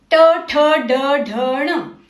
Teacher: ट वर्ग ट ठ ड ढ ण अक्षर इन अक्षरों को मूर्धन्य कहते हैं क्योंकि इन्हें बोलते समय जीभ ऊपर तालू को छूती है